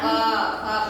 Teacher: अब क वर्ग का उच्चारण स्थान क्या है? कंठ।